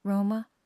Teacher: they call themselves one word, Roma, stress on the first syllable